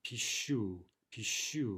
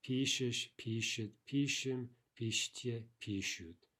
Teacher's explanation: Stress on the ending. But in the other forms, it jumps back. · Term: shifting stress